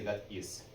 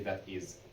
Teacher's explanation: Z changes into an S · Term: S sound